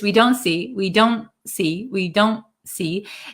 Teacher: It's called a held T where we um our tongue goes in the position of the T but we don't aspirate the T. We don't aspirate the T.